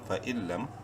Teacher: نون ساکن کے بعد لام حروف یرملون میں سے ہے، ادغام بلا غنہ ہوگا، لام میم زبر لم، فَإِلَّمْ۔